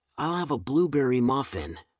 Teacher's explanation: with stress on blueberry making the flavor stand out in his sentence